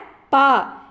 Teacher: இதழ்கள் இரண்டும் ஒட்டுவதால் பிறக்கும் எழுத்து